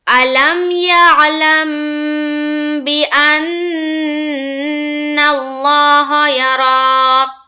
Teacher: میم ساکن کے بعد با کہیں پر بھی آئے تو آواز کو روکیں گے، غنہ کریں گے